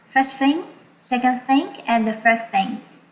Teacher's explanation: So I will use rising tone for the first two things, and then I will use falling tone for the third thing.